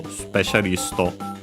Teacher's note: But yeah, specialisto, of course, the first, well, the first su and also the second one, because with the U barely heard if at all, because they're between unvoiced consonants